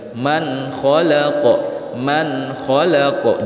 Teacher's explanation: Man kha nun sukun bertemu dengan huruf kha, hukum bacanya adalah izhar halqi karena ada nun sukun bertemu dengan salah satu huruf halqi yaitu kha, huruf tenggorokannya yaitu kha. Cara bacanya nun sukun dibaca jelas tanpa berdengung. Man khalaqa, man khalaqa, jangan dibaca ala ya'lamu man khalaqa, itu keliru.